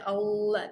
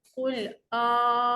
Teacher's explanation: Jangan baca Allah. Bukan lam yang panjang, A yang panjang.